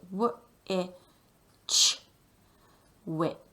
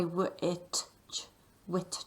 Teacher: You can't really hear the t very well. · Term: alternative ch sound